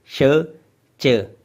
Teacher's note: श च ये जो दोनों वॉइसेस जब आप प्रोड्यूस करते हैं तो आपकी जुबान उठ के आपकी छत आपके मुंह की छत को टच करती है और उस छत को हार्ड पैेट बोला जाता है।